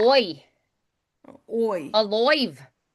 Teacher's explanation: whenever we have I, like by, Irish, we usually say oi instead